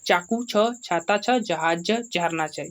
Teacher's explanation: तालू से उच्चारण होने वाले वर्ण है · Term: तालव्य ध्वनियां